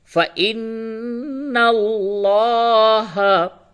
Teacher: اور لفظ اللہ کے لام سے قبل زبر ہے، اس لام کو پر کر کے موٹی آواز سے پڑھیں گے